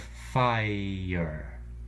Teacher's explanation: get ye air year moving down to five we have fire starts with an F sound and then we have the AI diphthong and finally the are colored schwa